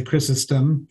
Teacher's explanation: most english-speaking people uh would say chrysostom because we tend to pronounce on the first syllable um but in in greek of course it would be crisostomos